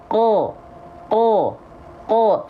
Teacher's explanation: itu bunyi vokal A-nya jadi O karena pangkal lidahnya diangkat, nama sifatnya isti'la.